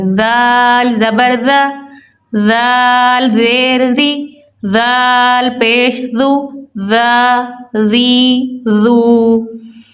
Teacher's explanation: زبان کو اوپر والے دانتوں سے ٹچ کریں گے اور نرمی سے ادا کریں گے۔